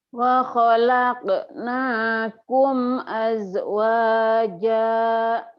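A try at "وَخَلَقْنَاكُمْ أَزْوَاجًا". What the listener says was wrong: wa khalaqnakum azwaja. Zai dulu ya Bu ya, kalau zai jangan ada e-nya. Aznya jangan ada e-nya, azwaja. Kalau zai bukan qalqalah ya Bu ya, jangan ada e-nya.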